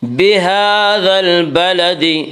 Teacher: کھڑا زبر کو 1 الف کے برابر کھینچ کر پڑھیں گے۔